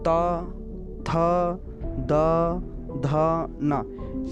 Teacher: ये हमारे समस्त वर्ण हमारे दंत को या दांत को स्पर्श करते हैं